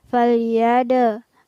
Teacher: di sini ada huruf dal yang bersukun di tengah ayat, maka berlaku hukum bacaan qalqalah